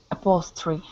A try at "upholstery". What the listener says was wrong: Good. Nice job. Good TR sound there.